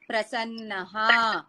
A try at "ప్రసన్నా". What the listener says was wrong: ప్రసన్న అనే ఆడవాళ్ళకి ప్రసన్న అనాలి, ఆడవాళ్ళకి దీర్ఘం ఇవ్వాలి. ఆడవాళ్ళన్నిటికీ దీర్ఘాలు తీస్తారు కదా, అలా దీర్ఘం ఇవ్వండి. అహం మమ నామ ప్రసన్న.